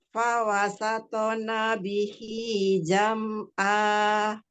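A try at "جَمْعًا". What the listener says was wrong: Jangan diputus mimnya. Lagi mim sukun.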